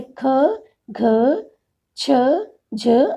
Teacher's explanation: इन व्यंजनों में फेफड़ों से निकलने वाली वायु की मात्रा अपेक्षाकृत अधिक होती है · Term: महाप्राण